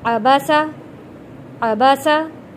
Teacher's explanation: زبر کو ہم نے جلدی اور نرمی کے ساتھ پڑھنا ہے، کھینچ کر نہیں پڑھنا۔ عین کے اوپر بھی زبر ہے، با پہ بھی زبر ہے اور سین کے اوپر بھی زبر ہے۔